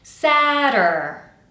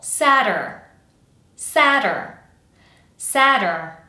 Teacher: Quick tap in the middle, but it has to be audible. · I have my tapped t, which is going to sound kind of like a d in American English. And then I'm going to quickly transition to my dur dur dur.